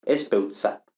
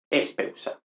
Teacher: Pero aquí, como habíamos visto en los sustantivos de la tercera, de tema en oclusiva, no es meramente gráfico, sino de hecho fonético, pues en contacto con la sigma del sufijo de aoristo desaparece la consonante dental